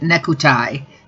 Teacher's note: Japanese doesn't have 2 consonant sounds together, so the k from neck and the t from tie couldn't be together. So when Japan, if someone who's learning the English language, if they're Japanese, when they see the word necktie, they would probably pronounce it nekutai, because they need to have something in between.